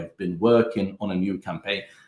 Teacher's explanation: in the present perfect continuous, we do not stress have, we do not stress been, we actually stress the main verb, which is working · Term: sentence stress